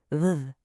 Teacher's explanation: The fix here is all about vibration. So put your top teeth on your bottom lip just like you would for an F sound. But this time, turn on your voice. Make it buzz. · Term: V sound